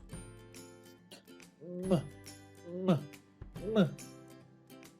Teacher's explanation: That's because in producing M, the air goes through the nasal cavity, but when we're producing B, the air goes through the oral cavity. Since the M is produced by the air going through the nasal cavity, we call it a nasal sound.